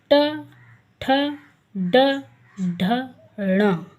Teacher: देखिए आपकी जीभ जो है ना वो मुड़ जाती है और ऊपर मूर्धा में लगती है।